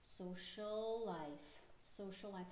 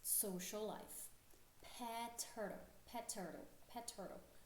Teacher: ao invés de falar social, life, falar o L duas vezes, você fala só uma vez.